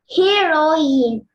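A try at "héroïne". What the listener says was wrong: It's not heroine. H will be silent. How will you read? And accent on top of? I, only on top of I? E and I.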